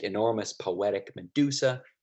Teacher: in all of those words this stressed is in the middle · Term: amphibroch